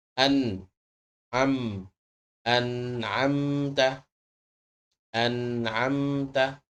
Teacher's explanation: Nah, ini adalah huruf gunnah. Gunnahnya, getarannya keluar dari hidung, tapi hurufnya keluar dari bibir. Hurufnya sama seperti huruf nun.